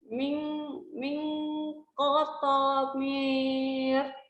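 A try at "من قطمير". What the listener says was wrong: Nah, ini qafnya harokatnya kasrah.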